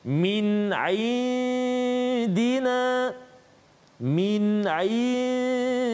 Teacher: nun mati bertemu dengan dal, maka hukum dia dengung dengan kadar 2 harakat